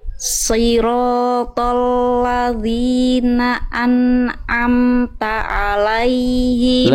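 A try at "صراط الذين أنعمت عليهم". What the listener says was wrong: Lebih bagus tinggal lam yang ini Bunda, lam huruf tipis huruf tebal. Lam huruf tebal huruf tipis. tipis. Maka ketika dilafalkan tadi Bunda melafalkan lamnya terbawa huruf to.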